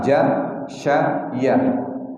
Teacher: kalau kita mengucapkannya itu agak di tengah-tengah lidah kita